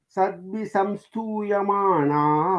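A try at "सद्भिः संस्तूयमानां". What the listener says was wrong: Sadbhisamstuyamanam. Not sadbhisamstuya. Extra s is there.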